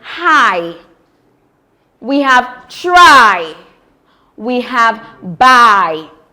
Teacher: It starts with the open mid-back vowel A and glides to the closed front vowel E. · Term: diphthong I